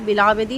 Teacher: با پہ قلقلہ اور زبر زیر پیش بالکل معروف ادا کیے جائیں گے